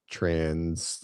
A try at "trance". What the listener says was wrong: It sounds like you're saying trans like a gender. Yeah, a little bit more. A little less is.